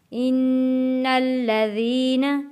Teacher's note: نون کے اوپر تشدید ہے، غنہ ادا کریں گے اور نون کو لام تشدید والے کے ساتھ جوڑ کر پڑھیں گے۔